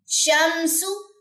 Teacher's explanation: شین کے اندر تفشی کی صفت ہے. تفشی کا مطلب کیا ہوتا ہے کہ آواز جو ہے پھیلے گی